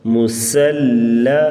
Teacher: پیش مو سین زبر لام سل مسل، لام زبر لا مسل، لام کو بریک پڑھیں گے، سین سیٹی کی آواز